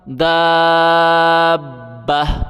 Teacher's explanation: یہ چھوٹی تا ہے، جب ہم وقف کریں گے تو یہ ہا میں کنورٹ ہو جائے گی، ہا پڑھیں گے